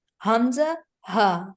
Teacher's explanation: Aqsa is deepest, so it's going to pronounce deeper sounds, hamza, and then ha. Let the air go inwards till your bottom of your throat.